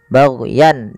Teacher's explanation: suara tanwinnya dibaca dengan jelas karena bertemu dengan hamzah, baghyan, dan tidak boleh ada penahanan. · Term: izhar halqi